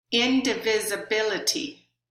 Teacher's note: In the word indivisibility, b has primary stress. The first sound, in, has secondary stress. And in this case, the syllable v has tertiary stress.